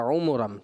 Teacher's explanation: ایک تو توجہ یہ، اور دوسری جب آپ نے عُمُرًا پڑھا تو مجھے ایسا لگا کہ فتح میں جو ضمہ میں ہونٹ گول ہوتے ہیں، تو آپ کے مجھے ایسا لگا ہونٹ گول نہ کرنے کی وجہ سے ایسا لگا کہ آپ فتح کی طرف چلے گئے، تو ضمہ مشابہ فتح ہو گیا